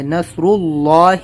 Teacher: نصر صاد کو موٹا کرنا ہے، نصر اللہ، اللہ لفظ سے پہلے پیش ہے تو اللہ ورڈ کو موٹا کرنا ہے